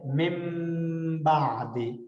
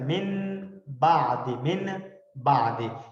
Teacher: نون ساکن یا تنوین کے بعد اگر با آ جائے تو یہ جو ہے نا با اپنی شیپ ایکسچینج کر لے گا، یعنی گویا کہ یہ با جو ہے یہ اس نون کو میم ساؤنڈ درمیان میں ایڈیشنل دے دے گا. جس طرح ہم فیمس مثال ہے مم بعد، اب مم پڑھتے ہیں مم ڈبل میم، حالانکہ اصل میں من نون ہوتا ہے، من بعد، من بعد، لیکن ہم مم بعد پڑھ رہے ہوتے ہیں، ڈبل میم پڑھ رہے ہوتے ہیں، نہ کہ بیچ میں نون کو پروناؤنس کر رہے ہوتے ہیں. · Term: اقلاب